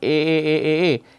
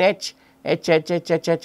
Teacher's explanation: a sound that you get now alternating between h and a one finds the vocal fall vibrate for a and not for H